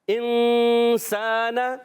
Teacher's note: نون کو چھپاتے ہیں، ناک میں آواز لے کر جاتے ہیں اور پھر اس غنے کو ادا کرتے ہیں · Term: اخفا